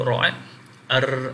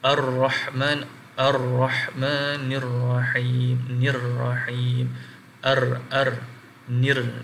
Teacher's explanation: Maknanya dia ada getaran. Huruf ra ada getaran bila kita baca. Contoh kita baca, kita sebut ra, ar ada getaran. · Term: at-takrir